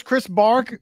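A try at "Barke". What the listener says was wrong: It's Barky. Yes, it's a long E, Barky.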